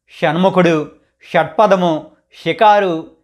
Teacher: ఈ ష ను మనం ట ని ఎలా పలుకుతామో అలా నాలుక మడత పెట్టి పలకాలి అయితే ట పలికినప్పుడు నాలుక కొన భాగం అంగుళి వెనక భాగాన్ని అంటే మూర్ధన్యాన్ని